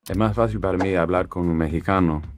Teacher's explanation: He has a little bit of aspiration, his S's are a little bit weak. It gives it a little bit of a Caribbean feel.